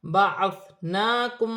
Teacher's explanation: نون پر کھڑی زبر ہے، ایک الف کی مقدار کھینچ کے پڑھا جائے گا